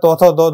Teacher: এগুলো হচ্ছে দন্ততে উচ্চারিত হয় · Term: দন্তন্য